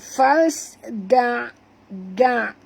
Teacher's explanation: huruf dal jangan tebal ya. Kerana makhrajnya di hujung lidah saja.